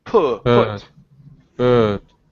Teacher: here you've opened the vowel too wide.